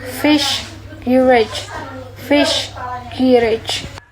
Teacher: Both sound involve the tongue approaching or making contact near the postalveolar region.